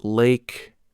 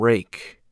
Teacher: For the L sound, put the tip of your tongue on the roof of your mouth behind your upper teeth. For the R sound, pull the tongue back without touching the roof of your mouth. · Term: L and R distinction